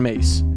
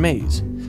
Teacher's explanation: mace and maize where the za is voiced